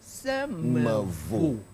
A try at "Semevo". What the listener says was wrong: No R. If you put R, it's Semevo. Semevo. Vo.